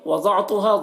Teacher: ضاد کو پر پڑھیں گے، ضاد حروف مستعلیہ میں سے ہے،